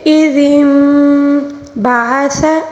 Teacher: عین کو حلق کے درمیانی حصے سے ادا کریں